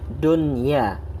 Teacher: nunnya tetap dibaca jelas meskipun bertemu dengan huruf iya. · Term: ijhar mutlak